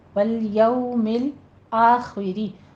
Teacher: خو کو پر پڑھیں گے، کسرہ کی آواز باریک رکھنی ہے، آخری نہیں کہنا، آخری.